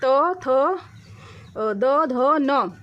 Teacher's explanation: जैसे ही हम त वर्ण का उच्चारण करते हैं त तो ये हमारा जीभ है वो हमारे दांत से टच होता है तब ये वर्ड निकलता है तो त थ द ध न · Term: दंत व्यंजन, दंत्य व्यंजन